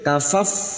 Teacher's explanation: fa sukun makhrajnya terletak pada bibir